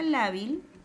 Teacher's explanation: Porque la palabra lábil lleva la mayor fuerza de voz en la penúltima sílaba